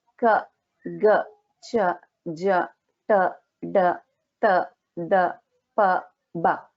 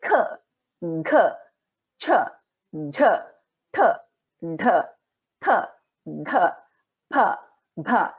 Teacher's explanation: the 1st and the 3rd letter are alpa pranaha, which means we can pronounce this with very little effort or stress.